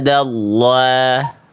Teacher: Indallah. Allah-nya tebalkan dulu pangkal lidahnya. Naikkan, jangan dulu tipis ya. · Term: lafaz Allah